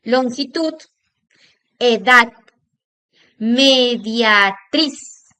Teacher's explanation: Vamos también a presentar que en el caso que hay palabras que no se acentúan con la tilde, pero sin embargo van a tener también un acento en la última sílaba de la palabra